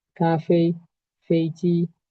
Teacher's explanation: Cada que vean una palabra de dos sílabas, que ambas sílabas tengan el primer tono, ustedes van a mantener esa cadencia aguda y mantenerla allí arriba